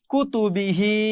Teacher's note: কুতুবি, হা খাটা জের হি, কুতুবিহি, কুতুবিহি, এগুলো কোনোটাতেই টান দেওয়া যাবে না, শুধু শেষে এসে টান হবে হা খাটা জের হি